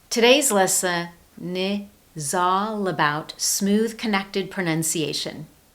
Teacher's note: In spoken English, when a word ends with a consonant sound, as in the word lesson, and the next word starts with a vowel sound, as in the word is, that ending consonant sound is linked across to that vowel sound.